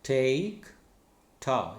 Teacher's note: This is alveolar, voiceless stop.